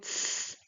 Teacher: The difference is that I was saying that the difference is that while in the 次 sound, here we have 次, so the C alone, we have just the tip of the tongue touching the back of the teeth, the upper back of the teeth